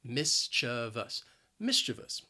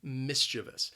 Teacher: just say maybe somebody is mischievous the word has three syllables the stress is on that first syllable and both that second and third syllable have that schwa sound